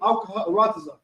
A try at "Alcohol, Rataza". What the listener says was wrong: Alcohol, when you say that, you might want to slow that down. Alcohol, of Rataza.